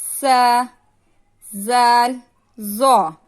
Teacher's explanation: زبان کی نوک جب اوپر والے دانتوں کے سر لگنے سے حرف لساویہ ادا ہوتے ہیں